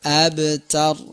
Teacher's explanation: Ada ra-nya di ujung, ra-nya juga dibaca tafkhim ya, atau dibaca tebal.